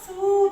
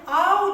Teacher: Ол у бізде дауыссыз дыбыстан кейін келетін болса, у дыбысы бізде дауысты болады екен.